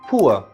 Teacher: In modern London Accent, this sound is generally not treated as a separate diphthong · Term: oo-er sound